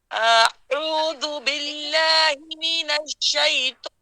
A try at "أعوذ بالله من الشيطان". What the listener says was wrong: اس لیے کہ آپ نے کھولا ہے اتنا بس اتنا ہم نے پورا لمبائی میں منہ کھولنا ہے یلا اعوذ اعوذ باللہ